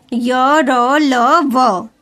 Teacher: इन व्यंजनों का उच्चारण करते समय जिह्वा मतलब जीभ मुख के किसी भाग को पूरी तरह स्पर्श नहीं करती, मतलब किसी भी भाग को पूरी तरह जीभ टच नहीं करती मुंह के अंदर। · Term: अंतःस्थ व्यंजन